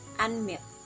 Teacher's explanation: we use falling intonation when we say and milk